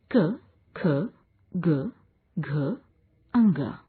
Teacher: कोमल तालव्य। इन वर्णों के उच्चारण में जिह्वा कोमल तालु का स्पर्श करती है।